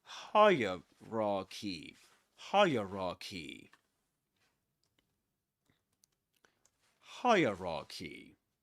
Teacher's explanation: we say hierarchy and the accented syllable is the first one